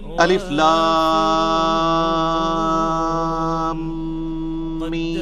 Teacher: الف لام میم نہیں ہے, یہ وہ اردو میں ہے, عربی میں سے ایسے ہی پڑھنا. 3 سے 5 الف تک کھینچنا ہوگا, لام کو بھی اور میم کو بھی. اور لام اور میم چونکہ اس کا جنکشن ہے تو میم کے اوپر تشدید بھی ہے, غنہ بھی ہو رہا ہوگا اس اعتبار سے کہ میم کی آواز.